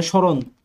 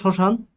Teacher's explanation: ম যখন শব্দের আদিতে ব্যবহৃত হবে, সে ময়ের কিন্তু কোনো উচ্চারণ বাংলা উচ্চারণে ব্যবহৃত হবে না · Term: নাসিকধ্বনি